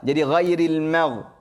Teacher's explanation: Ghairil ma, mim nipis, ghain yang tebal.